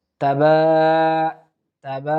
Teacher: তাবা এর উপর খাড়া জবর আছে এক আলিফ আমরা টানার চেষ্টা করব